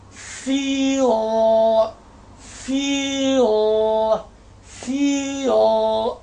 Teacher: what is this this is a long vowel I told you when L comes at the end of the word and before it a long vowel so L is a dark l